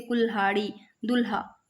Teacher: हिंदी में अगर ल का महाप्राण देखें तो लह विकसित हुआ है